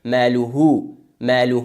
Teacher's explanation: چون ماقبل های ضمیر اگر فتحه و ضمه باشه او را با ص وادار میخوان یعنی مثل وا میخوان مثل پیش میخوانش ماله ماله و اگر ماقبل های ضمیر کسره